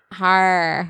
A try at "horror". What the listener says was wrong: Har. Anything with that OR sound is like very tricky for you.